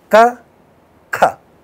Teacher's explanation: If you put your hand close to this, close to your mouth, and say the two sounds, you will feel more flow of air in the second one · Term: aspiration